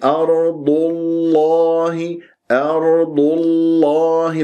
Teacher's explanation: نطقت اللام ولا زالت شفاه مضمومة بتأثر بضمة الضاد